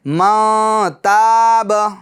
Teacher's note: اب پیچھے سے ملائیں گے تو اب گننا کریں گے نون ساکن میں، ما تاب، ما تاب، اور گننے کی مقدار 1 الف کی مقدار ہے، ٹھیک ہے، یعنی 1 الف کی مقدار آپ کی آواز ناک میں رہے گی، ٹھیک ہے۔ ما، نون ساکن کی آواز ناک میں رہے گی گننے کے طور پر، اس طریقے سے ما تاب۔